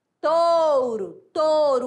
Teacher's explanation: Touro, touro, O é vogal, o U é semivogal.